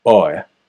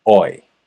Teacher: starts closer to O and ends closer to I, oi, whereas I start closer to aw and end closer to E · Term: choice vowel